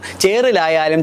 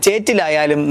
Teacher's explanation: നാക്ക് തൊടുന്നതിന്റെ ആവർത്തനമില്ലെങ്കിൽ അത് ഇറ്റ എന്നാകും. ഉച്ചാരണ സ്ഥാനം കണക്കാക്കിയാൽ രണ്ടും വത്സ്യമാണ് ആകുന്നതെങ്കിലും ഉച്ചാരണ സ്വഭാവത്തിൽ റാ നാദിയും ഇറ്റ ശ്വാസിയുമാണ് എന്ന് ഭാഷാശാസ്ത്ര പ്രകാരം പറയുമ്പോൾ തമ്മിൽ സാമ്യത്തെക്കാൾ വ്യത്യാസമുള്ളവയാണെന്ന് മനസ്സിലാക്കാം.